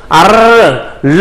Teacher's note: 유음은 공기가 혀 옆으로 흘러가는 소리